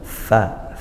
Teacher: makhrajnya huruf fa, yaitu ujung gigi seri atas ke perut bibir bawah